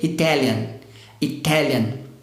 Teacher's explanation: quando eu penso na palavra italiano, a tônica já está na segunda sílaba, está na sílaba do T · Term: sílaba tônica